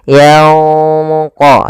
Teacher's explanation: Kemudian yanqalib ilaika, pada lafal nun mati bertemu qaf, di sini ada hukum tajwid berupa ikhfa. Cara membaca ikhfa yaitu samarkan suara nunnya kepada huruf qaf yang ditebalkan, karena huruf qaf huruf isti'la.